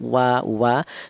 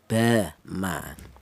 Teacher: untuk huruf wawu ini yaitu dihasilkan dari kedua bibir yang renggang atau tidak rapat atau tidak nempel ya. Kita bilang wa, kedua bibir kita renggang.